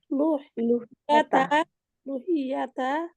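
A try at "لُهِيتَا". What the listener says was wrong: লুহি না, লুহি ইয়াত হলো, তারপরে লুহি ইয়াতা হবে না, লুহি লুহি তা হবে ওস্তাদ জি, এখানে একটু আমাদের ঠিক করে দেন।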